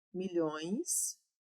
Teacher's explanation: Há, no termo milhões, um ditongo decrescente em ões. · O O e o E ficam na mesma sílaba, o que faz com que eles se tornem um ditongo. E como começamos numa vogal e descemos, então fica um ditongo decrescente.